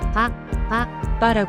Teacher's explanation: 한국어의 빠 발음과 유사하게 입술을 닫았다가 터뜨리면서 내는 소리입니다. 강하게 파열하는 느낌으로 발음해야 합니다. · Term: 반타금